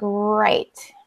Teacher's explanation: in Portuguese, the R sounds kind of like a H sound. But here it kind of has like a really strong R sound